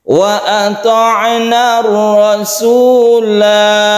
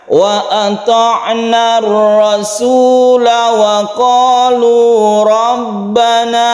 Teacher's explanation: Jadi ketika wakaf itu panjang satu alif, ketika wasol atau terus ini tidak panjang sama sekali. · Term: sifir mustatil